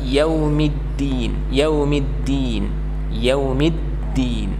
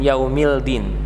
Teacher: alif lam syamsiyah atau yang dibaca lebur, ya, ataupun dibaca langsung bertasydid